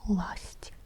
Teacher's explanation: A is the stressed vowel.